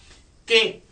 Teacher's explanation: टंग के पिछला हिस्सा, जबान का पिछला हिस्सा आपने इस्तेमाल किया। एल टंग और ऊपर से रूफ यानी पैलेट को यूज किया।